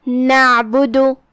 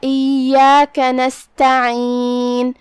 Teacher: حرف العین ہے، ہم اسے حلق کے درمیان والے حصے سے ادا کریں گے